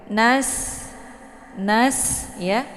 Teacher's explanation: sin ini dibaca tipis ya, sama seperti kita membunyikan huruf S ya. Nas, jadi anginnya lepas kemudian ditipiskan.